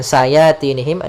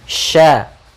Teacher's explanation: Sya sempurnakan huruf shinnya, jangan dibaca dengan sayatinihim dengan sin atau dengan sayatinihim atau dengan huruf sa.